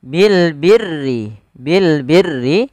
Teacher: Kita tulis tapi kita baca dengan jelas suara lamnya. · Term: alif lam qamariyah